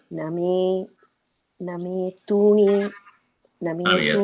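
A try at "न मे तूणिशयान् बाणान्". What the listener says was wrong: Tuniya, not truni. It is, Name tuni shayan banan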